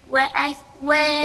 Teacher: اهمسي اهمسي الكاف ساكنة